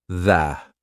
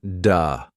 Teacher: the th sound. Your tongue has to come through your teeth.